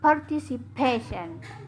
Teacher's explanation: The stress on the second to the last syllable.